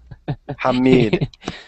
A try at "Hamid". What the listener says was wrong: Hamid. It has not any S. Hamid.